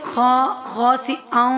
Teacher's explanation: تنوین کے فوراً بعد حروف یرملون میں سے واو آ گیا ہے تو یہاں پہ ادغام ہوگا۔ خاسئا، واو میں مدغم ہو رہا ہے، ٹھیک ہے۔